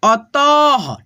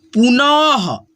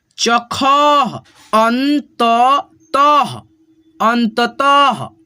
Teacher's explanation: दो विसर्ग को हम लोग ह के रूप में उच्चारण करेंगे